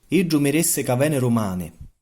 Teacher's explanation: an initial D can be pronounced like an alveolar tap in some accents.